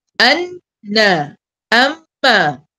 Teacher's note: naik ke hidung itu sifat dia sifat dengung